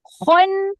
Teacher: Kena tebal eh. Berangin dan tebal. Kh macam nak buang kahak sikit.